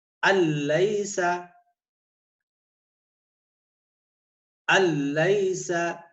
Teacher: ٹھیک ہے، نون سائلنٹ یعنی نون کے ساری کی ساری آواز ہم نے لام کو دے دی، اسے کہتے ہیں تام. ادغام تام کیا مطلب کہ نون ساکن کی آواز ساری کی ساری ہم نے لام کو دے دی، نون کو فارغ کر دیا